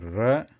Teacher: the tip of the tongue is trying to touch the murdha in the mouth · And since it is ra, though it is a vyanjanam, there is not complete touch of the tongue to the top hard part of the mouth here, and there is a slight air which is going to pass above between the tongue and the top of the mouth here. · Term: refa, refa sound